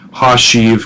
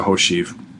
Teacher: In the Headful of first vav verbs, however, the old ha prefix in combination with the initial w yields the contracted diphthong o